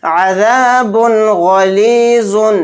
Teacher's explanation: با 2 پیش بن میں غنہ نہیں کرنا ہے یعنی اظہار کرنا ہے. با 2 پیش بن کی آواز کو ظاہر کر کے بلا غنہ کے جلد اس طرح سے پڑھیں گے